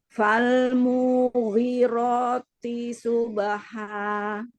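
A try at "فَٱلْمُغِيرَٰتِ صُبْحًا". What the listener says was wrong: Mu-nya tidak panjang. Kasroh ya. Jadi tadi setiap T itu nggak bunyi T gitu.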